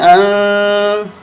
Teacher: इख्फा करेंगे, नाक में आवाज़ छुपाएंगे